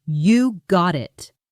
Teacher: You got it is ONE phrase: You-go-dit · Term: Linking Sounds